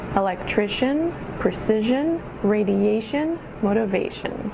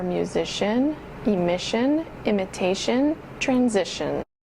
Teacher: the emphasis is on the syllable right before shun, shun, or shun